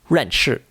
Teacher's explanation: it starts high and ends low also called the descending tone it has a lot of energy and it comes down fast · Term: fourth tone